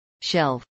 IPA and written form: ʃɛlv (shelve)